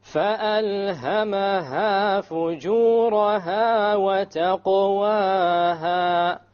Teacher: We have here a silent qaf in the taqwaha. What level of qalqala will this be? It's the weakest level.